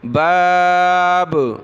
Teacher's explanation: کلی باب، با الف زبر با، با دو زیر بن، بابن. جب رکیں گے تو با پر قلقلہ ہو جائے گا